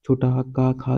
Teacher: छोटा हा का खा ये कंठ में आता है